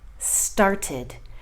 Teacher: And this has a id sound at the end. It's got an extra syllable. Started. So I'm going to start with the easiest sound of the 3, and that's the id sound.